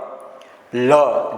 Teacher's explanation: લ જીભનો આકાર નળિયા જેવું બને, બંને પડખેથી હવા પસાર થાય છે.